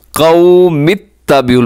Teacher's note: मीम को आपने ता के साथ मिलाना है